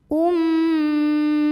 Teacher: Jadi ini bunyi M-nya tahan sampai bergetar halus ke hidung. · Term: gunnah musyaddadah